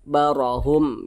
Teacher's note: Huruf ra dibaca tebal karena dia memiliki tanda baca fathah, dibaca tabkhim. Barahum, jadi lidah kita itu terangkat ke atas.